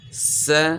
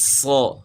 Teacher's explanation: اب یعنی صاد کو ہم نے موٹا کرنا ہے، س سی سو یعنی باریک آواز تھی تو اب آواز موٹی ہوگی، صو، یعنی س اور صو، سین کی آواز کو ہم نے موٹا کیا، س صو۔